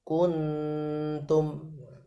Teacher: Ini dengungnya itu posisi tarkik, karena nun huruf nun itu huruf tipis, jadi harus dijelaskan tipisnya nun. Kuntum langsung masuk ke makhrajnya nun, bukan NG Indonesia ya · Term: ikhfa